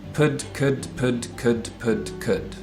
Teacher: So we have a lip sound, p, a tip of the tongue sound, d, and a back of the tongue sound, k. And they're all stops.